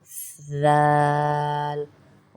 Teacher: अब जाल को अदा करने के लिए आपकी ज़बान की टिप दांतों से थोड़ी सी बाहर आएगी, जैसे सा के लिए आई थी।